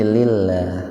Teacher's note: Lafaz Allahnya dibaca tipis. Tarkik itu tipis.